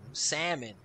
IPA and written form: ˈsæm ən (salmon)